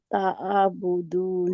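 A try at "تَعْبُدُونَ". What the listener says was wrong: नहीं आप आ रहे हैं, ता आ बुदून, आइन के ऊपर आप जबर लगा रहे हैं। ता बुदून, ता बुदून।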